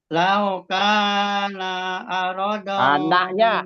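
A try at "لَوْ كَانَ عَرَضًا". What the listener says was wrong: Naknya nggak panjang.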